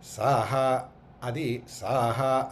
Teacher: నాభిలోంచి రావాలి అది కింద స్థాయి స్వరం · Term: అనుదాత్వం